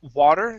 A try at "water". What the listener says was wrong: Use a D sound here in the middle. Instead of wala, it's water.